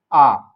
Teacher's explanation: ऐसे स्वर जिनका उच्चारण करते समय मुख द्वार नीचे से ऊपर की ओर पूरी तरह से खुल जाए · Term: विवृत